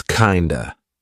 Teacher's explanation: Again, we're turning that of into a schwah.